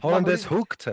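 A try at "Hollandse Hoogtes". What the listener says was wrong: It's Hollandse, right? Hollandse, because the S is before the E. It's not Hollandaise, it's Hollandse.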